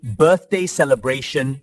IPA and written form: ˈbɜːrθdeɪ ˌseləˈbreɪʃn (birthday celebration)